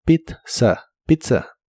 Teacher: Esta es una palabra italiana que se usa en inglés. La primera Z se pronuncia como T y la segunda Z como S.